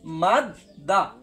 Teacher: মিমটা গিয়ে আগে দালকে ধরবে, মিম দাল জবর মাদ, এরপরে দালটা আরেকবার উচ্চারণ হবে দাল জবর দা, মাদ দা। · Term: তাসদিদ